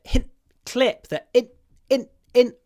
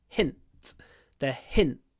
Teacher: clip the in in in before the unvoiced T at the end